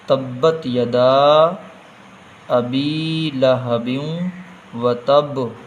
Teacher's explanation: یہاں مد ہے، تھوڑا کھینچنا ہے۔ ابی یہاں پر حروف مدہ میں سے یا ہے، اس کو تھوڑا کھینچیں گے · یہاں پہ گنہ ہوگا کیونکہ تنوین کے بعد میں واو ہے، حروف یرملون میں سے واو آیا ہے تو گنہ ہوگا، اس میں ادغام ہو جائے گا، گننے کا نام ہے ادغام۔